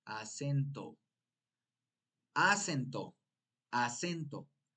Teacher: acento es grave tiene la sílaba tónica en la segunda sílaba en la e